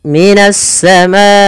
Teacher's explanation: kita memanjangkan untuk hukum tajwid mad wajib muttasil sepanjang empat harakat atau lima harakat · Karena datangnya huruf hamzah setelahnya, maka dia menjadi 4 harokat dan biasa ditandai dengan tanda yang seperti ini. Ini kita memanjangkan untuk hukum tajwid mad wajib muttasil sepanjang 4 harokat atau 5 harokat.